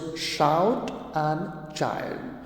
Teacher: example of the palatals are the initial sounds in the words shout and child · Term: palatal sounds